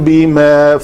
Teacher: میم ساکن کے بعد با ہے تو اخفاء شفوی ہوگا, 2 حرکت کے برابر آپ کو یہاں پہ رکنا پڑے گا.